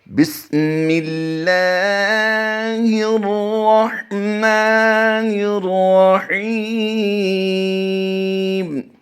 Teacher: اس کی ادائیگی جب ہم کریں گے تو اس لفظ اللہ کی لام کو ہم باریک پڑھتے ہیں، اسے پر نہیں پڑھتے